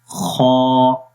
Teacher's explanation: اس کی زبان کی جو جڑ ہے، یہ پیچھے والا حصہ زبان کا، وہ اوپر کی طرف اٹھتا ہے۔ تو اس کا مطلب یہ ہوتا ہے کہ آواز بیسیکلی اوپر کی طرف جائے گی تو اس کے اندر موٹائی آ جاتی ہے، تو پڑھیں گے خا، تو یہ حرف موٹا ہے، اس وجہ سے اس کے اندر صفت استعلا ہے۔